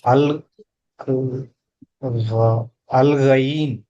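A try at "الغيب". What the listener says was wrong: అల్ గైబ్. కల్కలా రావాలి. గైబ్ బా శబ్దం రిటర్న్ రావాలి.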